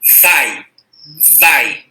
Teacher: Repara que o A é pronunciado com força e o I é pronunciado mais fraquinho. O I é uma semivogal.